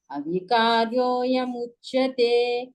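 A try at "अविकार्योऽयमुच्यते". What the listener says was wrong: Second పాదంలో అవికార్యో అయం అని పలకగలగాలి. ఆ మాత్ర లోపిస్తుంది. అది మీరు కొంచెం స్పష్టంగా అనండి.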